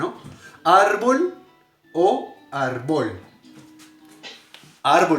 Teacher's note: la sílaba tónica de árbol o la sílaba más fuerte de árbol de la palabra árbol es la penúltima sílaba